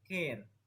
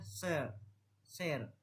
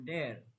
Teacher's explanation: Ketika huruf A berada sebelum RE, bunyinya cenderung panjang dan berubah menjadi E. Panjang ini terjadi karena kombinasi huruf RE mempengaruhi artikulasi vokal yang datang sebelumnya, membuatnya lebih tegang dan panjang.